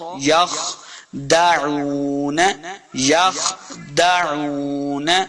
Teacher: خا کو موٹا پڑھیں گے اور یا کو خا کے ساتھ ملا کے پڑھنا ہے